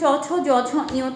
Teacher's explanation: তালব্য ধ্বনি যেমন চ ছ জ ঝ ইয় তালুকে স্পর্শ করছে